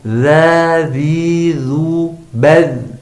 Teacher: Nah, yang kedua yang kita harus ketahui bahwa huruf dzal itu tidak memiliki sifat sofir. Nah, jadi dia tidak berdesis